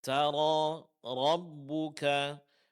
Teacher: Semua di sini huruf ro ditebalkan. Pertama karena dia berbaris atas.